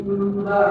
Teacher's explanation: Contoh mimba itu mati bertemu ba. Jadi nun mati ini seolah-olah harus diganti dengan huruf mim. Jadi mimba nanti, tetapi dalam bacaannya saja. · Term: iqlab